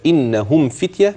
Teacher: لما أجي أوصلها أقولها كده إنهم فتية بدون غنة